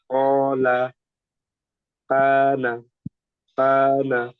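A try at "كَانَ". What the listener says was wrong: কাহানা কেন শুধু কাহানা, এখানে কর একটু ধাক্কা চলে আসছে, এটা কি বুঝতে পারছেন যে আপনার এই কর মতন ধাক্কা এখানে হয়ে যাচ্ছে? হ্যাঁ, এটা করা যাবে না। কানা, বাংলার মাশাআল্লাহ হয়েছে, আপনার এটা একটু প্র্যাকটিস করতে হবে যাতে এই অযথা একটা জায়গায় টেনে না ফেলেন।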